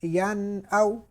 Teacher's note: یا نون زبر ین، حمزہ واو زبر او، ین او، اب سوری یہاں پہ غنہ نہیں کریں گے کیونکہ نون ساکن کے بعد حمزہ